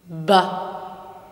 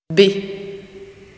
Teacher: The first thing we hear is the onset of the consonant b. Burst is the technical term, through the sudden opening of the lip occlusion. Concurrent with the burst, an initially straight vortex jet flows horizontally out of the mouth.